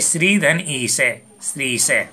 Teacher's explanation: दीर्घ ई के बाद दीर्घ ई होने पर दोनों के स्थान पर दीर्घ ई हो जाता है।